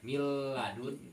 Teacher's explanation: nun sukun atau tanwin bertemu lam atau atau ro maka bacanya diidgamkan dimasukkan makhraj nun sukun atau tanwin itu ke makhraj lam dan ro tapi tidak pakai Gun